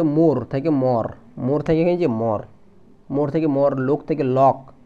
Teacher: শুরুতে ওকার ওকারকে অকার রূপে উচ্চারণের বহুল প্রবণতা দেখা যায় ওকারটা অকার হয়েছে মানে মোর থেকে মর মোর থেকে এখানে মর